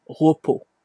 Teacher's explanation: on voit bien qu'on ne prononce pas le S